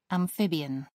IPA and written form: æmˈfɪbɪən (amphibian)